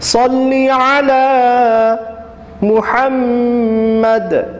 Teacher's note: صلی میں صاد کو موٹا کرنا ہے